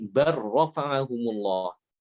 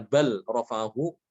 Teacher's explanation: Di situ dia lamnya diidghamkan ke ro, bukan dibaca bal rafa'ahu, ya.